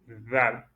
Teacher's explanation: Il y a le bout de la langue qui est dégagé entre les dents